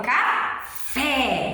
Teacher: a gente já pronuncia o fé com mais força. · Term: sílaba tônica